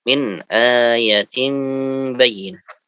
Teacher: Ayatin, A-nya panjang, Ya-nya pendek.